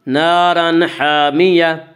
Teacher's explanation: اس کا قاعدہ ہے کہ نون ساکن و تنوین کے بعد اگر حروف حلقی میں سے کوئی حرف آئے تو اظہار حلقی ہوگا، اور یہاں تنوین کے بعد حروف حلقی میں سے ہا آ رہا ہے اس لیے یہاں پہ اظہار حلقی ہوگا